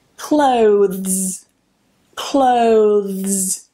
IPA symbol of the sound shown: ðz